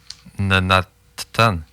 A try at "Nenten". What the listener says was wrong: Nenten. Ouais, le premier A, il se prononce pas. Nenten.